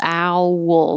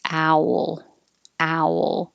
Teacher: it's almost two syllables ow wool but you blend them together